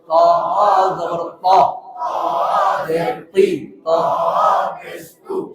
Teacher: সামনের উপরের দুই দাঁতের গোড়া থেকে মোটা ভাবে আদায় হবে। ত জবর ত, সামনের উপরের দুই দাঁতের গোড়া থেকে মোটা ভাবে আদায়।